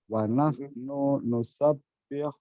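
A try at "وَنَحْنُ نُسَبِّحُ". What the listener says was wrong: Nunya pendek.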